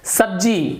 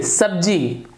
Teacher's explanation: जब स बोलते हैं तो जीभ आपका नीचे रहना चाहिए, तो फिर ये दंतव्य स का सही उच्चारण होगा।